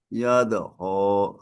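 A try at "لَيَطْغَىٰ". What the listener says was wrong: Lebih kencang toknya. Ya, lihat toh biar tidak apa nyaru dengan do.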